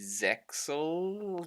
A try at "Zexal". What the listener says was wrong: It's spelt Zexal, but it's pronounced Zeal.